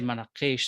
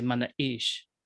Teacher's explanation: It's called manaqish, but people don't say manaqish, they say manaish, where that Q transforms and disappears into this glottal stop.